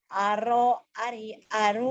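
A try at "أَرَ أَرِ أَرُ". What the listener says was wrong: Nggak ada yang panjang. Aro, ari, aru. Aro, ari, ari, Aro, ari, aru. Aro, ari, aru.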